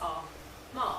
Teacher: So ma requires you just to blow air quite strongly through your nose. It often requires you to have a paper tissue handy as well.